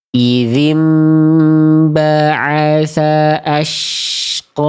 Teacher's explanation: Qaf itu tebal, vokal seperti O-nya itu keluar, bukan karena monyong, tapi karena tebal pangkal lidah terangkat. Ya, oke. Ya, mulutnya gak boleh muncung, gak boleh mencucu, gak boleh manyun, gak boleh maju.